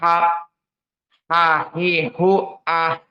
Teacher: makna dari alhams di saat kita menyukunkannya maka keluarlah udara